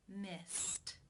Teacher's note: the final infinitive sound is the S sound that is unvoiced so it is case 1 where the e D is pronounced as the T sound